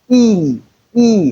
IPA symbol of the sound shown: i: